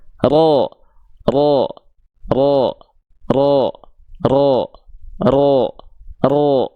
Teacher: Kenapa terdengar seperti vokal O karena pangkal lidahnya naik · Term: huruf tebal